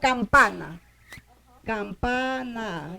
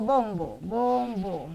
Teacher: Si aquí hay una N y le sigue una bilavial que se pronuncia con los dos labios, automáticamente yo voy a pronunciar acá también con los dos labios. O sea, este contagia a este, ¿ya? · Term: contagio